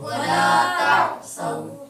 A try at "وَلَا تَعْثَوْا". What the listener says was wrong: سو نہیں ہے ہاں ثا ہے تو سو کیوں پڑھ رہے ہو ولا تعثوا